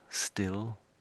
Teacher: Is a slight W creeping in there, only very subtly at the beginning